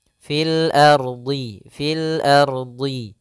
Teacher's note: langsung fil ardhi fil ardhi qolu kemudian r-nya di sini ardhinya r-nya tebal ro tebal